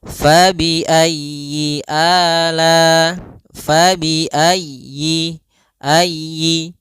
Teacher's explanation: Pada lafal fabiayyi ala di sini usahakan huruf ya-nya ditekan.